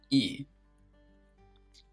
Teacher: this is not a diphthong but it is considered a long vowel sound